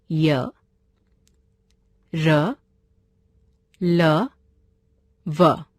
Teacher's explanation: इनका उच्चारण करते समय जीभ मुंह के किसी भाग को भी पूरी तरह स्पर्श नहीं करती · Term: अंतस्थ व्यंजन